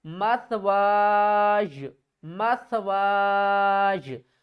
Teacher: مت واج نہیں کریں گے، اس کو اب ہم نے کیا کرنا ہے؟ واو کو 3 الف کی مقدار کھینچ کر ہم نے یا کے ساتھ ملانا ہے